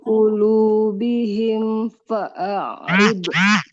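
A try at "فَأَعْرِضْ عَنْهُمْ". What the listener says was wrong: Dotnya jangan dipantulkan. Fa'arid anhum. masih agak memantul. Jadi biar nggak memantul, lidahnya harus tetap nempel ke gigi geraham atasnya. Fa'arid rid. Nah, fa'arid anhum.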